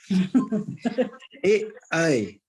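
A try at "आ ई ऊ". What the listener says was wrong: A, I. It's all dirgha, I said. A, I are not the same. They're all separate. They're not ekatmaka.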